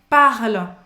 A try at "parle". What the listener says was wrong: Não é parle, tá bom? Apesar de ser o E que tá aí também, como no je, não pronuncia esse E.